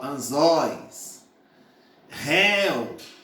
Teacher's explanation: ditongo aberto maior abertura da boca